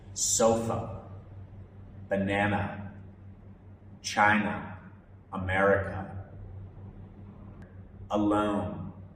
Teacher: it's super relaxed like a soft uh it appears in unstressed syllables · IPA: /ə/